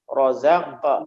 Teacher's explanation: ada mantulnya tapi mantulnya ringan, disebut qalqalah sugro. Pantulan kecil.